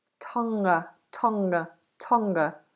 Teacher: we don't release that g Tong Tonga Tonga so we make it into a nasal